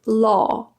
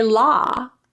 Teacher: There's a slight difference in the tensing and roundness of the lips.